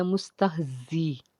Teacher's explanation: تہ، زا جو ہے زا بھی حرف سفیریہ میں سے ہے، جب زا کو پڑھتے ہیں تو سیٹی کی آواز آتی ہے